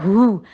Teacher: ہا جو ہے وہ حلق کے آخری حصے سے ادا ہوتا ہے. اس میں ہا کی ساؤنڈ نہیں دینی, خالی والے ہا کی ساؤنڈ نہیں دینی.